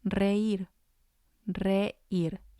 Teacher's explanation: it has 2 syllables, and the I has the accent, so it's going to be stressed.